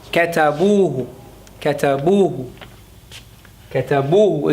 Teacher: كتبوه كتبوه كتبوه is almost as though you're saying كتبوه. You can hardly hear the who at the end of it.